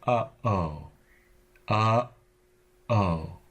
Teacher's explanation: stop it's also the sound in the middle of oh oh there's a stop there that dams the air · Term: glottal stop